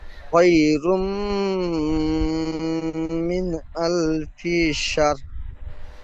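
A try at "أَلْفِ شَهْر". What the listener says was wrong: সার নয়, শাহ। লাস্টে র যেমন উচ্চারণ করতে গেলে মুখটা গোল হয়, ঠোঁট দুটি, ঠিক ওই রকম ঠোঁট দুটি রর আকৃতি আনবেন। আলফি শাহ। তাহলে লাইলাতুল কদরি খায়রুম মিন আলফি শাহ।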